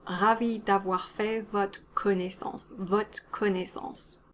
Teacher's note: In spoken French, the re at the end of votre might disappear because it comes before a consonant, so you might not hear it at all, and that's okay.